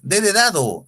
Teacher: la punta de la lengua los llevó hacia los dientes del maxilar superior